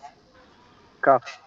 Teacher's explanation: কাফ হচ্ছে জিহ্বার গোড়া তার উপরে তালুর সঙ্গে লাগিয়ে কাফ। জিহ্বার গোড়া হতে একটু আগে বাড়াইয়া, মানে গোড়ার থেকে একটু সামনের একটু দিকে আগে বাড়াইয়া।